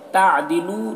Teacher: لو میں واو مدہ ہے، ایک الف کے برابر اسے کھینچیں گے